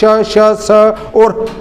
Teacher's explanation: उष्म व्यंजन ये ऐसे वर्ण हैं जिनके उच्चारण में विशेष घर्षण के कारण मुख से गर्म हवा निकलती है। इसके अंतर्गत श, श, स और ह आते हैं।